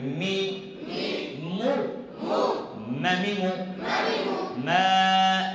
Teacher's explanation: দুই ঠোঁটের শুকনো অংশ হইতে মিম উচ্চারিত হয়